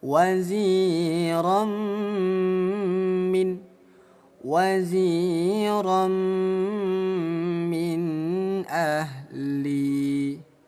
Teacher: Ada fathatain bertemu huruf mim disebutnya idgham bighunah. Bunyi tanwin kita leburkan ke huruf mim ya. Lalu dengungkan dua ketukan. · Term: idgham bi gunnah